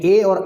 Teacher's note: ए और ऐ का उच्चारण कंठ और तालु से समान रूप से होता है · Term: कंठ तालु